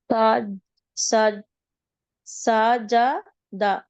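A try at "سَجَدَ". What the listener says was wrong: Very good. సజద.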